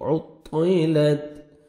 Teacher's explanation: طا کو موٹا کر کے پڑھنا ہے